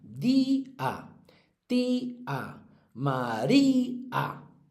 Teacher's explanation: Todas son llanas, tienen la fuerza en la penúltima y todas acaban en vocal.